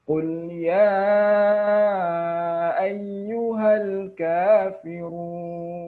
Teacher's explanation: huruf ya itu ada mad asli kemudian diikuti oleh huruf hamzah maka ya-nya tidak perlu diayunkan dan bahkan dipanjangkan lebih dari dua harakat